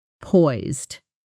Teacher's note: Poised gets a strong, slightly stretched vowel sound